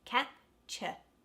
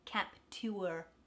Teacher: forum forum and last one capture that cha at the end it's u r e and it's not stressed the cap is stressed so it becomes capture rather than capture that would be a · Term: schwa